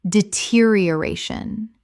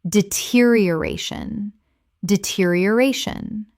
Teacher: Six syllables with the stress on the fourth.